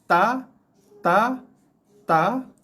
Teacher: hujung lidah kita akan sentuh gigi atas, gigi kapak akan kena bahagian gusi dan gigi sikit. Okay, tekan, lepaskan lidah kita daripada gigi, akan keluar bunyi ta.